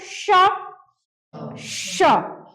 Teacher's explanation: इसका उच्चारण रगड़ या घर्षण से उत्पन्न उष्म वायु प्रक्षेप यानी उष्म वायु से होता है। यानी जब आप जब उच्चारण करेंगे तो लगेगा कि जैसे गर्म वायु जो है उष्म वायु जो है मुंह में क्या हो रहा है? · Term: उष्म व्यंजन